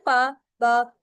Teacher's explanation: This sound is made with टू lips. ठीक है, यानी कि ये हमारे दो लिप्स से जो है प्रोड्यूस होती है। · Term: बिलेवियल साउंड्स